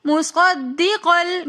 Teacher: وآمنوا بما انزلت، مصدقاً کے اندر ہم صاد کو دال کے ساتھ ملا کر پڑھیں گے، کیونکہ دال کے اندر تشدید آ رہی ہے، تو اس لیے ہم مصدقل، پھر آگے کاف کے اوپر 2 زبر کی تنوین ہے، 2 زبر کی تنوین کے بعد لام آ رہا ہے، تو یہاں پر ادغام بلا غنہ کا قاعدہ ہو رہا ہے، تو اس لیے ہم یہاں پر غنہ بالکل بھی نہیں کریں گے، مصدقل بالکل ورڈز کو اور اپنی آواز کو واضح کر کے پڑھیں گے۔